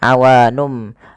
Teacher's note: nunnya bertemu dengan huruf ba awalnya awanun menjadi awanum maka di sini m itu dianggap mati saja sehingga bunyi awanum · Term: iqlab